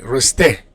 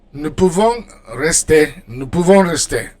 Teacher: for verbs ending in er, like rester, you don't pronounce the r, you just pronounce the e